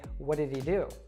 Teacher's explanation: you could completely miss the he there